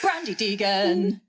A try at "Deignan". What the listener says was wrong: Deignan. The G is silent.